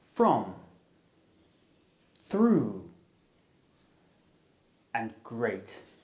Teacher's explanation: the r sound is made through the mouth and is voiced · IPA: /r/